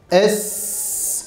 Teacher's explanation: Mesela sin harfini biz telaffuz ederken es dediğimizde s sesi akmaya devam eder. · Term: Rihvet sıfatı